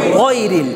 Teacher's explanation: মোটা হরফগুলোর মধ্যে জবর উচ্চারণ, আকার উচ্চারণ হবে না